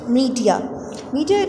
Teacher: it is used as noun so we have to put stress on the first syllable